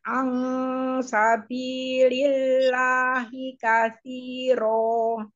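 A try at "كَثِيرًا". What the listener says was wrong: Coba Ibu pada kata kasiro. Panjangnya sudah bagus, tapi ibu ngucapin ro-nya, ibu memonyongkan kedua bibir. Huruf bukan huruf bibir. Ro.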